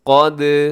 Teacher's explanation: آگے قاف موٹا ہے، دال قلقلہ کیجیے گا